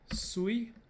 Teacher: with high tone at the start and high tone at the end. High tone at the start because of the spread glottis of the lateral fricative.